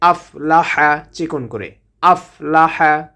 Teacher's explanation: হাটা কণ্ঠনালীর মধ্যখান থেকে উচ্চারণ করতে হবে।